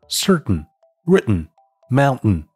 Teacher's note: 美式英语，也就是美音中的▁certain▁written▁mountain▁结尾的那个音就是喉塞音